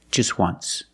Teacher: phonetically the t is between consonants so it's silent link the sounds